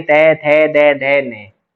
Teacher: जिन ध्वनियों का उच्चारण ऊपर के दांतों पर जीभ लगने से होता है उसे दंत्य ध्वनि कहते हैं।